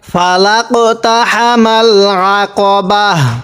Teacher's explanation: আমরা ওয়াকফের সময় এই গোলতাটাকে হা বানিয়ে দিব আপনারা যখন পড়বেন যখন ওয়াকফ করবেন দম ফালাবেন তখন যদি ওই শব্দের শেষে এরকম তা থাকে ওই তাটাকে হা পড়বেন ফালাকতাহামাল আকাবাহ এরকম করে পড়বেন তাহলে আমাদের ওয়াকফের বেসিক নিয়মগুলো শেখা